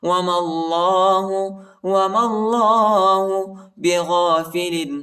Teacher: یا الف نہیں پڑھا جاتا، ان حرفوں کے اوپر حرکت نہیں، اور اللہ کے نام کو موٹا پڑھیں گے، پر پڑھیں گے